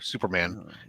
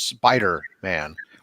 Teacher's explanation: you pronounce it quickly, Superman, fast versus Spider-Man, where there's a brief pause in there.